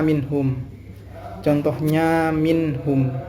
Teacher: jadi tidak ada dengung harus dibaca jelas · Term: izhar halqi